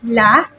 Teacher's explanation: pronounced similarly with the English L with the tongue touching the bumpy area behind your upper teeth